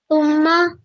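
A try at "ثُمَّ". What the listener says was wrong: You need to hold on the meme for 2 seconds. Thumma.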